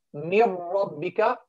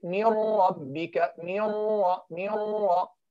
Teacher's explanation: Merge the nun sakina or tanween into the lam or the ra without gunna. That's necessary. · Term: idgham without ghunna